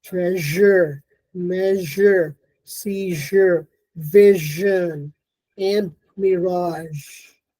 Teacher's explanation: Then we have the palatal fricatives. One is voiced, which is found in words like treasure, measure, seizure, vision, and mirage.